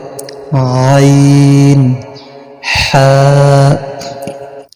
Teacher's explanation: কণ্ঠনালীর মধ্যখান হইতে উচ্চারিত হয়